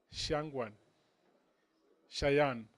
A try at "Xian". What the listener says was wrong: Actually, Xian. The G is silent.